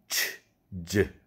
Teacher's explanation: 파찰음은 치, 즈 2개가 있는데 이것은 이 명칭은 파열음 플러스 마찰음입니다. 치 보면 트와 쉬가 결합된 거죠. 즈는 드와 즈가 결합된 거예요.